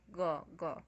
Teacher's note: No nosso corpus, todas as vezes em que o G ele tá em posição de ataque silábico, ou seja, no começo da sílaba, ele tá com uma plosiva uvular, ou seja, ele tá como gó.